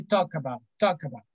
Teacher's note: without L, the L sound is not pronounced in this case